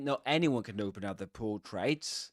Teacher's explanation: anyone is accented here and there's a full rise tone. But of course not anyone can open up the portraits.